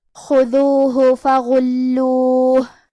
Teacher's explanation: کلمت خذوہ میں حرف الخاء کی ادائیگی حلق کے اوپر والے حصے سے ہے. خاء حروف التفخیم میں سے بھی ہے تو ہم یہ حرف کو بھاری آواز میں پڑھیں گے. دال کی ادائیگی زبان کے سر اور اوپر والے دانتوں کے اندرونی کناروں سے ہے.